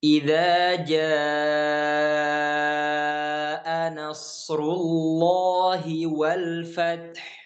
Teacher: Maka kita baca dengan 4 sampai 5 harokat. Itulah yang disebut dengan mad wajib muttasil, ya. Mad yang dia disebabkan oleh hamzah yang terdapat setelah huruf mad itu, ya.